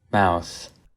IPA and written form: maʊθ (MOUTH)